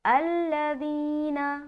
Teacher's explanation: ذال کی جو ادائیگی ہے بہت ہی نرمی سے کرنا ہے بغیر سیٹی کے